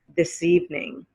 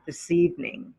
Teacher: the s at the end of this glides into evening